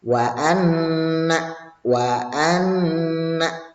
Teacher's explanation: dibaca secara mendengung, membacanya menunggu beberapa saat, jangan terburu-buru. Jadi maksudnya ditekan ya. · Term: gunnah